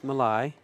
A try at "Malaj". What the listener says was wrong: He's from Greece, and the J sounded like an I.